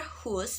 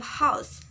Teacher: the long U found its nucleus dropping all the way to OW. The earlier hus became house.